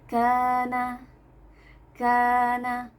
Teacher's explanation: Huruf kaf dan juga huruf nun dibaca tipis karena apa? Pangkal lidah kita tidak naik. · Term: istifal